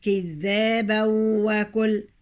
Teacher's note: هنا أضغمت التنوين، هنا وراه واو أضغمت